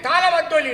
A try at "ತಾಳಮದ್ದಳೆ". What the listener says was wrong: ಮದ್ದೊಳಿ ಅಲ್ಲ ತಾಳ ಮದ್ದಳೆ